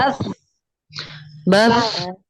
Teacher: Ya, ada hamas. Hamas itu keluar napas sedikit.